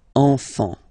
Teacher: Don't pronounce the T, you don't pronounce the S.